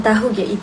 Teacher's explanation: gabungan A vokal depan rendah dan U vokal belakang sempit. Pergerakan lidah depan ke belakang dan bibir hampar menjadi bundar. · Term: diftong AU